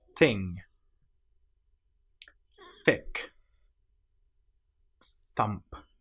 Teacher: The nonvoiced sound here is where we don't engage the vocal cords. We just push air through from our mouth.